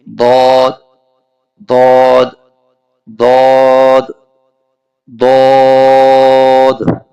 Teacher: the letter ضاد is produced by touching the side of the tongue with the upper 5 molar، یعنی اوپر کے 5 داڑ سے جب زبان کی کروٹ لگے گی تب جا کر ضاد کا مخرج ادا ہوگا۔